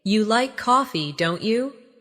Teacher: making your voice rise slightly at the end of the tag question